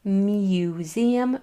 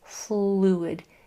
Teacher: instead of saying the whole U sound, it's just going to say just that last part, oo. So it is museum versus fluid.